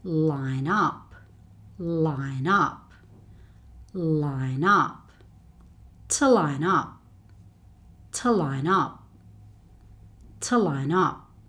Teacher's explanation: Consonant and vowel next to each other. These two words tend to be said as one long word.